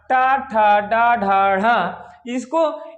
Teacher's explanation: इनको उच्चारण करते समय हमारी जीवा क्या करती है, मूर्धा को स्पर्श करती है, इसलिए आपके कौन से व्यंजन है, मूर्धा है।